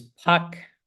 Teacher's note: This sort of aspirated P sound. Um the voiceless labial aspirated stop